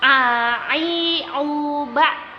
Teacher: Jadi waktu kita bilang ba sampai ke tenggorokan yang tengah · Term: ain